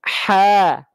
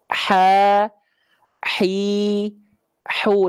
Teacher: Ha, hi, hu dengan nafas yang berbisik. Nah, cara melafalkan huruf ain nggak ada bedanya dengan huruf H kecil. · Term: hak kecil